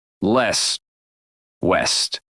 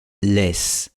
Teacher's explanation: el segundo formante de la L inglesa y de la W es bajo. Esto significa que la lengua está empujada hacia atrás.